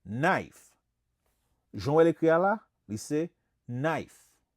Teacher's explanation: Here in English, we don't say the K.